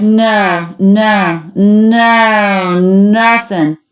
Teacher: we have the oh diphthong which she makes a little bit relaxed